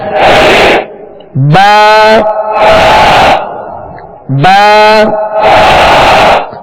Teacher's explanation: با کا جو مخرج ہے دونوں ہونٹوں کے تر حصے سے یہ ادا ہوتا ہے، دونوں ہونٹوں کے تر حصے سے ادا ہوتا ہے.